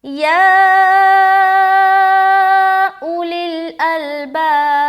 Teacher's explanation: या के ऊपर मद भी आ रहा है, तो इसको मद भी करेंगे, 3 से 4 अलिफ खींचना है